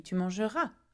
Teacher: If you were in France, you might not hear the r sound as pronounced as I do it here, but it is for you to practice, okay? It coming with a back of the throat r sound